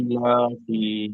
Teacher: ইটা টান দিতে হবে আর লাটা টান দিতে হবে, ফাটা জলদি পড়ে দিতে হবে